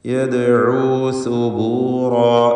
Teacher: ദാലിൻ്റെ സുക്കൂൻ ഖൽഖല സുഗ്റ നൽകി ശബ്ദം ഹറക്കത്ത് പോലെ ചലിപ്പിക്കുക. യദ്ഉ സുബൂറാ.